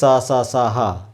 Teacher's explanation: रगड़ घर्षण ज्यादा होता है तो इसलिए इसे उष्म व्यंजन कहते हैं